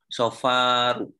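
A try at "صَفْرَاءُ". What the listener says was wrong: Sukun setelah ro. Ada alif. Sofro. Fa'la sofro gitu kan? Ya, sofra'u, fa'la'u. Sofra'u.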